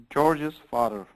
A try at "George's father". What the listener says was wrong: Don't leave out the S here. Don't leave out the S.